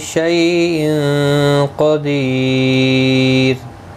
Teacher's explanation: را ساکن سے پہلے یا ساکن ہے اس لیے را ساکن باریک پڑھا جائے گا۔ یہاں پر وقف تام ہے اور یہاں پر وقف بالاسکان ہوگا۔